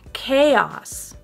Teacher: So we actually do say each vowel sound separately in this word, unlike many other English words.